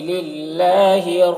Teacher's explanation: للہ میں اللہ کے لام کو باریک پڑھیں گے، کھڑا زبر ہے، ایک الف کے برابر کھینچیں گے